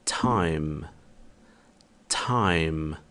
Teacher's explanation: O próximo som é o som de T, como em português, mas também é considerado um som explodido. Então deve haver uma explosão de ar ao pronunciá-lo.